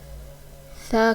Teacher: سا کو بھی نرمی سے پڑھنا ہے، سا کو ادا کرتے وقت سیٹی کی آواز نہیں آنی چاہیے. سا کی ادائیگی بھی جب زبان کی نوک اوپر والے سامنے والے 2 دانتوں کے کناروں سے لگے گی تو سا ادا ہوگا